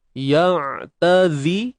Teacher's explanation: huruf zai tak perlu keluar ujung lidah, biasa je